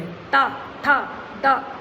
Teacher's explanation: ता को बोलेंगे दांत टच करेंगे, ता, था, दा, जीभ आपकी दांत से टच कर रही है, इसीलिए ये दंत वर्ण है।